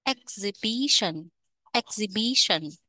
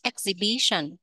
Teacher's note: nhấn âm thứ ba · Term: trọng âm